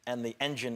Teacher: When it says and the engine, the N in and cancels out the D and the TH in the is softened.